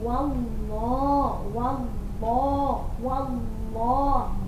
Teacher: ini sekarang contohnya lafaz Allah yang dibaca tebal atau tafkhim karena sebelum lafaz Allah harokatnya fathah